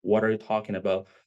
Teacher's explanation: The T of what becomes a soft R in Spanish, and if you put it all together, it sounds like water.